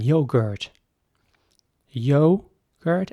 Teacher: so the o is very round once again